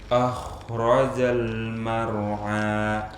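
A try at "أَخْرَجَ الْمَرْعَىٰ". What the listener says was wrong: Jangan sampai afan, jangan sampai hamzahnya tebal. Tebalkan ro-nya.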